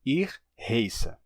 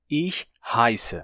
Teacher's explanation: Esse ditongo, ei, terminou se tornando ai em alemão padrão. Portanto, eles pronunciam isso hoje em dia como ir rai que pode ser escrito de duas formas.